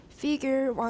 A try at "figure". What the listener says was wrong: Figure, not fee. Figure.